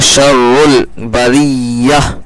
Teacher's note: ٹھیک ہے، اس لیے فیہا اولئک، لام کھڑا زبر اور مد دونوں ہے، تو اولئک ہم شر، یہاں پر بھی تشدید والا معاملہ ہے، 2 بار پڑھیں گے، اور یہ بیچ کا الف نہیں پڑھیں گے، اور را کو ڈائریکٹ لام میں ملائیں گے.